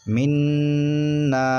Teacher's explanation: نون مشدد آ گیا، ایک الف کے برابر گنہ کریں گے، یعنی ناک سے آواز نکالیں گے